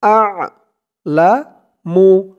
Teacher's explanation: لا أكلف تن خرا زبر والله আ'লামু হামজা দিয়ে আইন ধরবে আইনের উচ্চারণটা গলার ভিতর থেকে আসবে